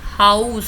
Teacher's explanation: So you are starting from o to u, you are going to u, starting from o going to u. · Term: Diphthong